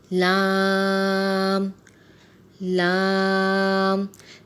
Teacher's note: زبان کا کنارہ اور دانتوں کے جڑ کے اوپر کے تالو کی جانب والے حصے سے ادا ہوتا ہے